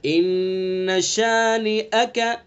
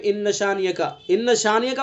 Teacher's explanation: ان شانیہ کا، ان شانیہ کا پڑھ دیتے ہیں، شانیہ کا پتہ ہی نہیں لگتا کہ حمزہ پڑھا بھی جا رہا ہے یا نہیں پڑھا جا رہا ہے